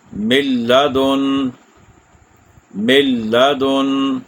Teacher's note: نون ساکن کے بعد لام ہے، میم کو ڈائریکٹ لام سے ملا دیا، غنہ بھی نہیں ہوا اور رکنا بھی نہیں ہے، تیزی سے آگے پڑھ دینا ہے، کھینچنا نہیں ہے کسی بھی حرف کو۔ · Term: ادغام